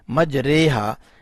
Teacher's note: یہاں کی کھڑی زہر کو ادا کرتے ہوئے ای کی آواز نہیں نکالنی بلکہ اے کی آواز آئے گی